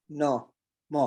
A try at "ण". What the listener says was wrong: हणा, हणा, नॉट ना नहीं है, हणा।